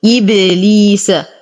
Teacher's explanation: نقلقل الباء لأنها ساكنة من حروف قطب جد. لدينا يا ساكنة ما قبلها مكسور فهما الطبيعي حركتين.